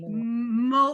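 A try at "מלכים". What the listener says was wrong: Malachim, because you're not pronouncing anything under the mem, so it's malachim.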